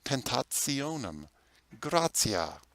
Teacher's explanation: a t before an i is a ts sound